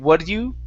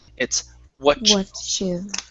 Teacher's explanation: So first up, with the T and the Y, okay, we cannot use a flap T saying, what do you? Okay, when you have the word you and it's paired with a word that ends with a T, that T changes to a CH.